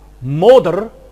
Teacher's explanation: there was a central vowel, as in moder, present-day English mother